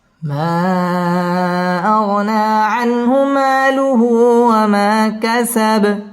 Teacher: মা মধ্যে মুনফাসিল 3 আলিফ টেনে পড়তে হবে